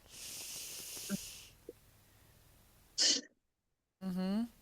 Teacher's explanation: All you have to do is breathe out the L sound. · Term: voiceless L